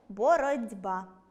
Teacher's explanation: Перший - глухий, другий - дзвінкий. Звук [б] впливає на попередній [т'], і той перетворюється на [д'] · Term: уподібнення за дзвінкістю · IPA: [бород'ба́]